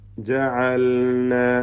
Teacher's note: ജഅൽന ലാമിനെ ഇൽഹാർ ചെയ്യുക, ശ്രദ്ധിച്ചോതുക